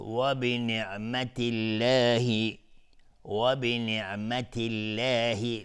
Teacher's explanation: لفظ جلاله اینجا ترقیق است، نازک تلفظ، چون قبلش کسره اومدیم